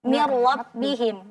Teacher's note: Jadi nun bertemu dengan ro, maka jangan kita dengungkan, bukan miru tapi mirlo. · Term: idgham bila gunnah